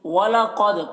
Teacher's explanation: قاف کو پر پڑھیں گے، دال میں قلقلہ ہوگا، دال میں کی آواز میں جنبش ہوگی۔